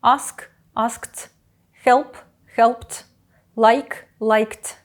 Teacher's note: після глухих та шиплячих закінчення оглушається